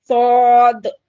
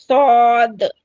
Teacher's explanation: जबान का साइड वाला हिस्सा ऊपर के दाढ़ों को या फिर कल्लों को लगाएंगे